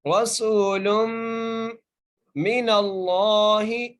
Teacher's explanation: लाम को मीम से मिलाकर पढ़ना है और मीम पर गुन्ना करना है।